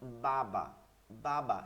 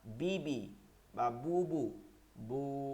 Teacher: আলিফ যেমন বাবা বাবা স্বাভাবিক দুইটা হরকত দ্রুত বলতে হবে বাবা এই বাবা বলতে যতটুক সময় লাগছে এইটা এক আলিফ